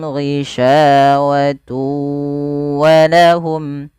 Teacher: itu idgham idgham artinya Pada dasarnya memasukkan al-idkal Nah di sini awalnya kan tun karena ketemu wau tunnya masuk ke wau sehingga bunyinya Kan awalnya kan pakai n